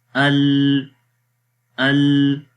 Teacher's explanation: وہ توسط کی صفت ہے کہ جس میں جو ہے وہ لام کی آواز نہ تو مکمل مخرج میں بند ہو رہی تھی اور نہ ہی مکمل جاری ہو رہی تھی